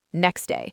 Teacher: For instance, next day often becomes next day, with the T sound simply not being pronounced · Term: elision